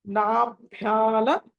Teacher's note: నాభ్యాల భాకి అక్కడ ఒత్తున్నది మహాప్రాణం కాబట్టి అది ఒత్తి పలకాలి.